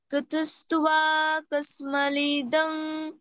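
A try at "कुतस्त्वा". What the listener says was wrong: কুতুস্তুয়া কুতুস্তুয়া না, কুতুস্তুয়া, ব, ব বলবে না, হ্যাঁ? হ্যাঁ, ওয়া ওয়া ওয়া উচ্চারণ হবে ব থাকলে।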